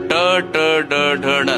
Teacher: ನಾಲಿಗೆಯನ್ನು ಸ್ವಲ್ಪ ತಿರುಗಿಸಿ ಹೇಳುವಂತಹ ಶಬ್ದಗಳು ಗುಂಪು